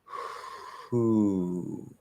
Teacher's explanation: we're going to start to hear a voiceless oo before the oo starts. Who. I don't change anything.